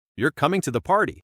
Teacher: Now, as a statement of fact with falling intonation.